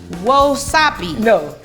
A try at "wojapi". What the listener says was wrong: No, Z. Wojapi. Close. Wojapi.